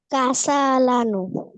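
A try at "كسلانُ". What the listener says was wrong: কাসা আছে, এটা অবশ্য ভুল, সিনে জবর হবে না, কাসলানো।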